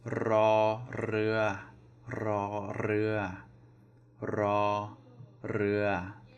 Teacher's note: so both flat tones, the R is rolled